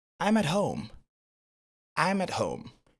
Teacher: Vous voyez, on a réduit considérablement le T.